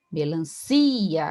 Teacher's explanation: a sílaba tônica é si